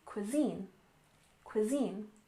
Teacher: Cuisine stresses the second syllable, cuisine. Cuisine.